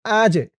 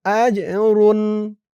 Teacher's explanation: জিমটা কলকলার হরফ ধাক্কা দিয়ে পড়তে হবে